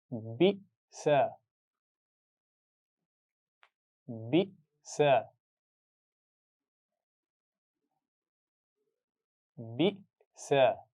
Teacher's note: हमजा साकिन के मखरज पे जब आवाज़ रोकेंगे तो वहाँ झटका देकर पढ़ा जाएगा